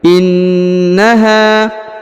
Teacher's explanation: ya huruf na ditahan dan ditekan karena terdapat tanda tasdid lalu huruf ha dipanjangkan dua harakat karena di depannya terdapat huruf alif